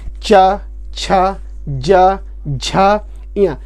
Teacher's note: आप देख रहे होंगे कि जो आपकी जबान है, आपकी जो जबान है वो जब आप इन वर्णों को बोलेंगे, टी वाले को, चा वर्ग को, तो जो जबान है वो तालु में लगती है, इसीलिए इसे बोलते हैं तालव्य